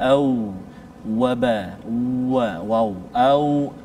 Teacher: makhraj asy-syafatain, iaitu antara dua bibir, iaitu antara dua bibir ini keadaan terbuka pula, iaitu huruf waw.